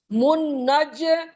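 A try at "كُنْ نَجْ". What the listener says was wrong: अरे कुन नज, कुन नज। मुन नहीं है, कुन, कुन कौफ है ना, कौफ को मुंह से।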